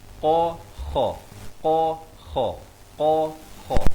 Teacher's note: Di sini qaf ini pangkal lidah makhrajnya. Kha ni hujung kerongkong.